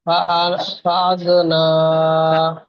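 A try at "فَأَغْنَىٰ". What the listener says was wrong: ফাআগনা, ফাআগ, গাইন উচ্চারণ করার সময় মুখটা গোল হয়। জি, মুখ ঠোঁট দুটো আরেকটু গোল করুন, আরেকটু, একটু গোল হয়েছে, আরেকটু। ফাআগনা, ফাআগনা।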